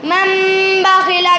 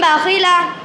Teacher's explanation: نون کو میم سے بدل کر غنہ اور اخفا کے ساتھ پڑھیں گے، اس کو اقلاب کہتے ہیں۔